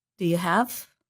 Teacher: The word you becomes reduced to the sound y.